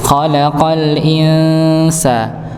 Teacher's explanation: jadi nun sukun ketemu Sin Sin termasuk huruf yang tipis maka ditipiskan ketika disamarkan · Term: ikhfa